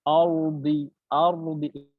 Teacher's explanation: অর্থাৎ আমার মুখটা একটু গোলাকার করতে হবে যাতে করে আমার শব্দটা মোটা আসে। লাইক আর, একটি হচ্ছে আর, আরেকটি আর।